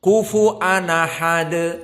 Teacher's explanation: Maka hamzah pada ahad dihapus. Namun harokat sebelumnya yakni fathah ahad dipindahkan kepada nun at-tanwin. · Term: an-naql